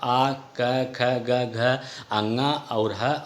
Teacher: कंठ वर्ण वो होते हैं जिसका उच्चारण स्थान कंठ से होता है